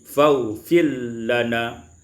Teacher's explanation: idghamur ra fil lam, diidghamkan ra pada lam menjadi faufil lana.